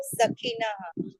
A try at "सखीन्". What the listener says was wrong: सखीन, विसर्ग नहीं है वहाँ, सखीन बस, न में हलंत है।